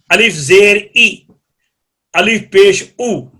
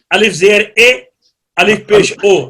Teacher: کسرہ اور ضمہ کلام عرب میں مجہول نہیں بلکہ معروف ہیں